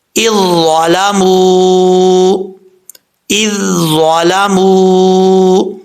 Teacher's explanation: اب اس میں دیکھیں پہلے ذال جو ہے وہ باریک پڑھا جا رہا ہے، بغیر سٹی کے پڑھا جا رہا ہے، اب آگے جو ضا ہے یہ حروف مستعلیہ میں سے ہے، پر پڑھا جا رہا ہے، فل ماؤتھ پڑھیں گے